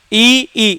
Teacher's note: तालू के पास जा रहा है टच नहीं हो रहा ये ध्यान रखना है ई ई इसलिए इसको क्या कहेंगे तालब · ई तालु के पास जा रहा है, टच नहीं हो रहा है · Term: तालवे